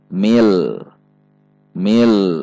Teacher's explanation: Mim kasroh masuk ke alif lam jalalah. alif lam jalalah didahului oleh kasrah, maka dibaca tipis. Ada tekanan dengan sifat bainiyah huruf lam.